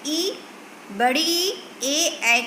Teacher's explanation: जिन स्वरों के उच्चारण में जीभ का अगला भाग काम करता है वह अग्रस्वर कहलाता है।